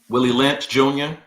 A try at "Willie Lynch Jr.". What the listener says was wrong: You said Junior too fast. You gotta go Willie Lynch Jr.